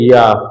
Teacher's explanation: इसके उच्चारण में होठ फैले या कभी तटस्थ रहते हैं जैसे या है ना तो फैले भी रहते हैं और कभी जो है नजदीक भी या है ना तो कभी नजदीक भी आ जाते हैं। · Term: अर्ध व्यंजन